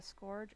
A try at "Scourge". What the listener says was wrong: It's Scourge. You said score.